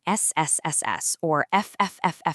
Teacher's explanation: Notice the difference? The vibration is completely gone. Those are voiceless sounds.